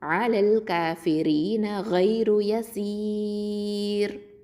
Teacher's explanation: சீன் கெசரா யாவுல் மத்து சி 2 ஹரக்கத்தை நீட்டுறோம்